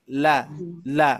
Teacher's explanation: Jadi ternyata Bapak Ibu sekalian, kalau kita perhatikan di lidah kita nih, ya posisi lidah kita kan huruf lam itu alisan ya, huruf yang di makhraj alisan ya, ujung lidah menempel ke gusi gigi seri atas, langit-langit ya, langit-langit